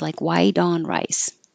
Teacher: The T changes to a D.